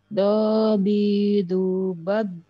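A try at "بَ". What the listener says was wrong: Terlalu nempel, Bu, lidahnya, Bu. Harus ada masih nafas mengalir. Bal, bal, bal.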